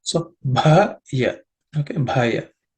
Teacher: The bha is the fourth letter in the pa varga, or pa category of consonants, so it has to be aspirated.